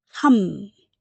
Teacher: in the hup there's a B sound, but when we say it, your mouth stays closed, so that B turns to an M sound. Hum. Because you can't go 합니다.